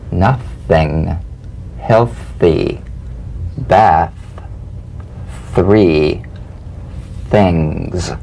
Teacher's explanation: The unvoiced tongue point to teeth fricative consonant. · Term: voiceless th